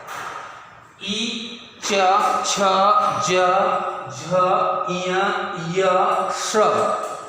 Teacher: ये पूरी जो जिह्वा है ऊपर की ओर जाती है और तालु में स्पर्श करती है, तालु का स्पर्श करती है।